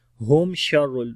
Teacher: میم ساکن کے بعد شین ہے، اظہار کریں گے میم کا